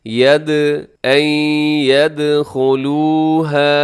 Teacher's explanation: دال حروف قلقلہ میں شامل ہے، یعنی کہ اس کی آواز کو ڈبل کرنا ہے، ید، این یدخلوها۔